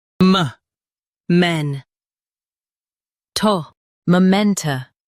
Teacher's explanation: Stress men and keep tuh soft.